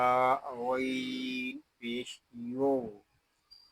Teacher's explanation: یہاں غین حروف مستعلیہ میں سے ہے, اس کو پوری یعنی موٹا پڑھیں گے